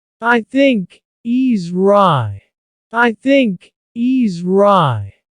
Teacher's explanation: at the end of the word right there's no T sound